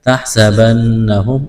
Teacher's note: نون مشدد ہے، غنہ کریں گے، آواز ناک میں چھپائیں گے۔